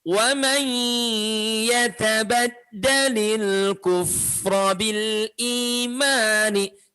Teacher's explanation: lebur dulu ke huruf ya disertai bunyi dengung, ditahan suara tidak boleh tergesa-gesa.